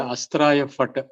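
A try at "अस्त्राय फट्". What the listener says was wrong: First and foremost, it is not a fat. It is not a fat. It is a phat. Pa.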